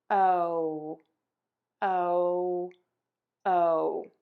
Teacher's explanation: my tongue tip starts low in my mouth with the back of my tongue pulled up, and then it moves to sort of in the middle of my mouth. The tip is going to be pointing out the front of my mouth, and the back is still pulled up a tiny bit. · my mouth moves from open to a pucker for that O sound. When my mouth moves, my tongue tip starts low in my mouth with the back of my tongue pulled up, and then it moves to sort of in the middle of my mouth.